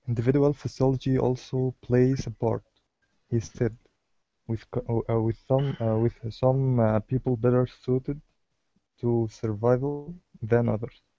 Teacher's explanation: your voice drops a little bit on he said, and then it goes back up